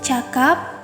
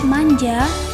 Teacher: Dan selanjutnya fonem J yang direalisasikan dengan bunyi J pada contoh kata manja, dan distribusi fonem J-nya berada di tengah kata. Fonem C dan J ini masuk pada bunyi laminopalatal, yang dimana adanya pertemuan antara daun lidah dan langit-langit keras. Di sini lidah berperan sebagai artikulator aktif dan langit-langit keras sebagai artikulator pasif.